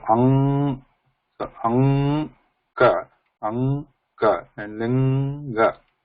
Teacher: And then the air is pushed out, and air passes through the oral cavity as well as Nasika, nose also in this case